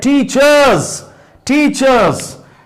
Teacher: R sound is already here hidden. It is not pronounced